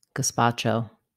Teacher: Letter Z in gazpacho says the S or S sound. The stress is on the second syllable, and letter A says ah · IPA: /ɡəˈspɑtʃoʊ/